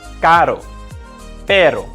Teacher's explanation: the tip of the tongue touches the roof of the mouth only once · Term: simple r